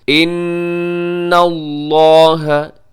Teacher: ان نون مشدد یہاں پہ غنہ ہوگا